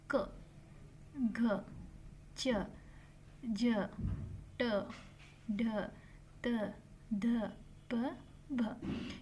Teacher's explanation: ಅಲ್ಪ ಪ್ರಾಣ ಎಂದರೆ ಕಡಿಮೆ ಉಸಿರಿನಿಂದ ಉಚ್ಚರಿಸುತ್ತೇವೆ. · ಅಲ್ಪ ಪ್ರಾಣ ಅಂದ್ರೆ ನಾವು ಬ್ರೀತ್ ನ ಸ್ವಲ್ಪ ತಗೊಂಡುಬಿಟ್ಟು ಹೇಳ್ತಿವಿ.